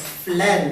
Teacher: the sound substitution of R sound to l sound some Japanese pronounce both R and L without any differences the word friend is pronounced as flend spelled f l e